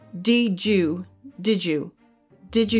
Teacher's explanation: the D sound the da in did and the Y in U basically form a j sound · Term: elision